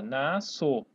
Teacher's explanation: Esse S aqui eu não pronuncio, só pronuncio como se fosse só o C cedilha